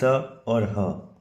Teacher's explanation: श्वास वायु मुख अवयव से रगड़ खाते हुए बाहर निकलते हुए उन्हें संघर्षी व्यंजन कहा जाता है